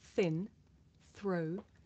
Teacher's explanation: blowing air between my tongue and my top teeth